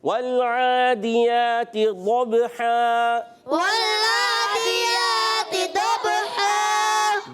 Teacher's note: با ساکن ہے، حرف قلقلہ ہے با، تو اس لیے قلقلہ ہوگا، آواز لوٹ کر آئے گی